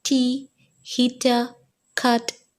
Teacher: During the production of t, the glottis is wide open and the sound is voiceless. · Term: alveolar plosives